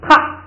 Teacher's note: 它原来是1声，现在要变成4声